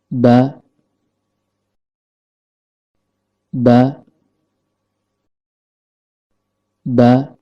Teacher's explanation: Huruf ba keluar dari tempat pertemuan antara bibir bawah dengan bibir atas dan kondisi lidah dalam keadaan normal.